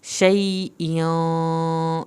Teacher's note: यहाँ पे शई खींच के पढ़ा जाएगा, इयों पे भी देर लगेगी क्योंकि इख्वा हो रहा है